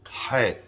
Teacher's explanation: a chet in Sephardic pronunciation, is not pronounced with the throat.